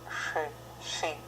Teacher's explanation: It's kind of not hard, not soft, it's a sibilant sound.